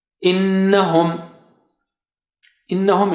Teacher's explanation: noon is having shadda there, that's why you have to give ghunnah here